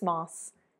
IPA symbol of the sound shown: s